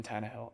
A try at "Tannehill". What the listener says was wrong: It sounded like you were like put an exclamation point. looked directly at you and he was like, Tannehill.